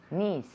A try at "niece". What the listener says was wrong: Niece. Niece. Niece. Tiene que ser larga. Niece, not niece. Niece.